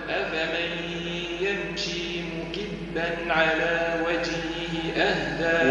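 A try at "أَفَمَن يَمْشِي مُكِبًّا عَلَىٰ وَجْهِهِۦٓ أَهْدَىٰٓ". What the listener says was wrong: ايش يتسمى المد هذا دي اخطات فيه فيه فيه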